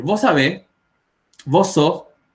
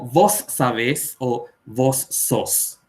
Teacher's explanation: Cuando hablamos con S al final de sílaba, tendemos a no pronunciarla o pronunciar muy suavemente. Entonces, es común que ustedes, no digo la S muy pronunciada, van a escuchar a los paraguayos decir, vos sabés, vos sos, y no como vos sabés o vos sos.